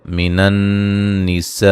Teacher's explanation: یہاں نون مشدد پہ غنہ ضروری ہے. سین پہ جو مد ہے مد واجب ہے.